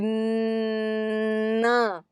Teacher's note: You know, when we, in English, for example, when we say n, when we are blocking the airflow in English at the alveolar ridge. However, you can continue to say the sound and air is flowing out through your nose. Through it enters the nasal cavity, gives you some resonance, like and then air continues to escape through the nose.